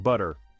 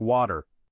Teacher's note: Flapping in linguistics refers to replacing a T sound with a quick D-like sound. So for Americans, butter ends up sounding more like butter, and water ends up sounding more like water.